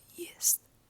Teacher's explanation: Spelled like Y-E it still has the T sound, but it's soft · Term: soft sign